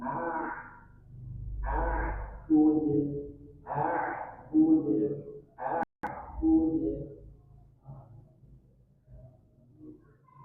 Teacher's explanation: Dan perlu dibalik lagi juga di ayat ini dia punya sifat bainiyah, sedikit mengalir suara, maka sedikit alirkan bud